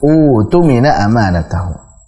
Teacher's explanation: Jadi bukan utumina karena berat. Orang Arab mengucapkan dua hamzah sekaligus berat, akhirnya yang kedua jadi huruf mad. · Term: mad badal